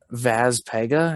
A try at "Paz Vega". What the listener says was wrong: It's Paz Vega. It's the exact opposite.